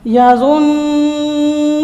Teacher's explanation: نون مشدد پہ غنہ کریں گے، ناک میں آواز لے کے جائیں گے